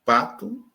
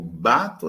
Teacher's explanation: P e B são oclusivas bilabiais, mas P é desvozeada ou surda e B é sonora ou vozeada. Eles são fonemas porque quando eu digo bato é uma coisa, quando eu digo pato é outra coisa.